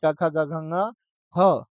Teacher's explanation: कवर्ग, कवर्ग में क, ख, ग, घ, ङ, ह। आपका ह का और विसर्ग का उच्चारण स्थान क्या होता है? कंठ होता है।